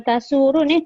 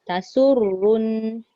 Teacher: Sadaqallahu Tasurun nazirin. Dia jangan tasurun tasurrun sebab ra ada sabdu